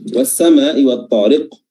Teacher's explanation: as-sama', di sini terdapat mad wajib muttasil. Ya, panjangnya wajib 4 atau 5 harokat. Ya, dan sebelumnya adalah was-sama', di sini adalah ada yang dinamakan sebagai alif lam syamsiyah, ya.